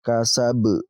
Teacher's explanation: Ba-nya ini kita pantulkan karena masuk kategori qalqalah kubra. Qalqalah kubra yaitu ketika ada huruf qalqalah yang terletak pada akhir ayat dan kita berhenti di ayat tersebut.